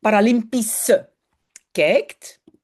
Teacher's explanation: Le SCH à la fin est toujours prononcé comme S, hein, pas CH comme en allemand